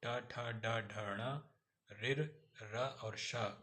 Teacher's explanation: मूर्धन्य व्यंजन: मूर्धा और जीभ के स्पर्श से अर्थात जीभ के पतले वाले भाग और तालु के पतले वाले भाग के स्पर्श से बोले जाने वाले वर्ण मूर्धन्य वर्ण कहलाते हैं। इसमें ट वर्ग ट, ठ, ड, ढ, ण, ऋ, र और श आता है।